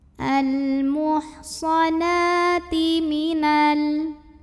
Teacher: Na mad tabi'i muqaddar. Karena ada fathah panjang di atas huruf nun, maka kita panjangkan nunnya 2 harokat.